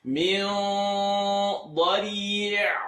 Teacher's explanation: Nothing has to move because ayn lives in the second part of the throat. Min dadi'. You're stretching the la and ending on the ayn.